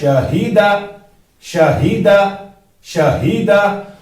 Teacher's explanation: اس ہا کا مخرج جو ہے اقصائے حلق ہے، یہ ہمیں حلق کے اس حصے سے نکالنا ہے جو سینے کی طرف سے ہے